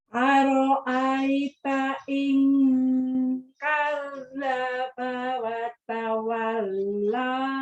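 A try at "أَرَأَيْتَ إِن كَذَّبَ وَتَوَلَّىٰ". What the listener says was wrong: Tuh, agak lelet tuh di situ. Itu yang maksud saya. Harusnya metode sentak kayak gini. Ara'aita in kadzdzaba wa tawalla. Kurang cepat ya.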